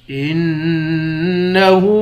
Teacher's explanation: ہاں پر الٹا پیش ہے، 1 الف کے مقدار کھینچتے ہیں۔ کاف کے بعد الف ہے، اس الف کو 1 الف کے مقدار کھینچیں گے۔